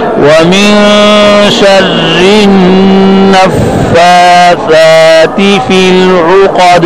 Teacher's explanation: فی العقد میں عین صحیح پڑھنا ہے، قاف موٹی ہے، دال میں قلقلہ ہے